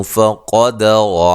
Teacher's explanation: قاف کو موٹا، را کو موٹا